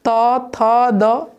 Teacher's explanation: उसी प्रकार तथा जो है उसको दांत में जब तक नहीं सटेगा जीभ मेरा, तब तक ये उच्चारण नहीं हो सकता